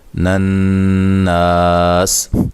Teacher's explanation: نون مشدد پہ غنہ ضروری ہے، نا الف مدہ ہے، تو جب وقف کریں گے سین ساکن ہو جائے گی، تو مد کے ساتھ وقف کر سکتے ہیں۔